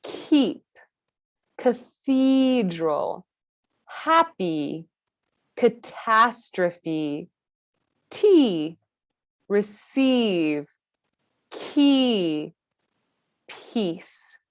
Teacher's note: This vowel sound is characterized by a front tongue position that is high and pressing forward in the mouth. E. The sides of the tongue are touching the upper molars, and the tip of the tongue touches the lower teeth, which is something we'll find for all of our vowel sounds.